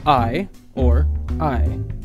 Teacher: The English singular subject pronoun I is produced in a stress position as a diphthong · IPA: [aɪ]